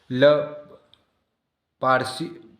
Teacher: पार्शिवक जिसके उच्चारण में हवा जीभ के पासों से बगल में निकल जाए। ल, देखो निकल रही है, अपन उच्चारण करते हैं तो अपने को स्पष्ट समझ में आ रहा है।